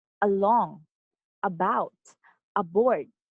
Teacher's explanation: the stress is on the second syllable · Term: unstressed syllable